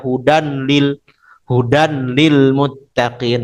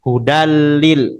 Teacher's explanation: nanggung banget itu lidahnya langsung aja masuk ke lam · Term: bilagunah